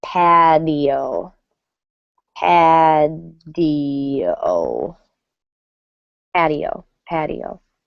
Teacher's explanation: Notice that in American English, the T sounds like a D.